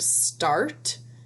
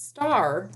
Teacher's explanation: If I take this T off, it would be star. But because I have a consonant, T, it shuts off, it makes a T sound and shuts off the R sound. But star just keeps going.